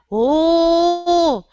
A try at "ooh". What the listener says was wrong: You're going louder. Ooh. That's not going up. That's not going to give you a native sound.